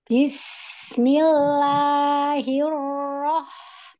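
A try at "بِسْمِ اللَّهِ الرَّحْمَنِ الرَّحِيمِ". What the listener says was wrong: Bagus, tetapi walaupun sin sukun dan hak sukun itu zamannya adalah rokhwah, tetapi tidak terlalu lama seperti itu. Walaupun rokhwah, nggak boleh juga terlalu lama. Saya contohkan ya. Bismillahirrahmanirrahim.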